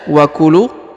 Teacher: huruf lu dipanjangkan 2 harokat karena di depan huruf lu terdapat waw sukun atau waw mati